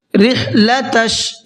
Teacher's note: हा को हलक से निकालेंगे